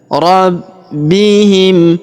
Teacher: huruf B kita tahan dan kita tekan karena terdapat tanda tasydid ya.